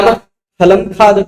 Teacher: राम फ बोलने से पहले या पढ़ बोलने से पहले हवा का सर्वाधिक प्रेशर हमारे होठों पर आता है, विसर्ग बोलते हैं राम, हवा सर्वाधिक हवा होठों पर आता है, इसलिए यह वाला जो आधा विसर्ग हो जाता है इसका उच्चारण स्थान ओष्ठ हो जाता है, और इसको उपधमानीय कहा जाता है।